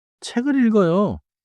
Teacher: The 키읔 sound links into 을. 책을 is not choppy. It connects. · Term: linking